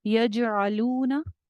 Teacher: यजअलून, जीम के ऊपर आपका कलकला हो जाएगा, जीम जो है वो कलकला वाले लेटर्स में है, कौफ तौबा जीम दाल 5 लेटर्स हैं जिनके ऊपर कलकला होता है।